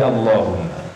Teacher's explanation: La-nya selalu dibaca panjang meskipun tidak ada alifnya.